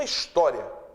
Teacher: esse I final aí de história é uma semivogal. Até porque se ele fosse vogal, a pronúncia não seria história.